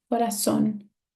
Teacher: This is a aguda because my stressed syllable is the last one